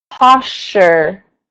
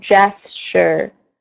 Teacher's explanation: Okay, so the STU in the middle of the word blends together as much as you can, but don't lose the R on the end of the word